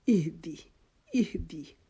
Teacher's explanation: جو ہائے وہ حلق کے نیچے سے نکلے گی, جیسے ہم سانس پھولے کے ساتھ کوئی آواز اپنی ادا کرتے ہیں یا خدا نخواستہ کسی تکلیف میں ہماری آواز نکلتی ہے.